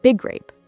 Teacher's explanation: For example, in big grape, we don't say big grape. We just hold the G sound for a fraction longer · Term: consonant-to-consonant linking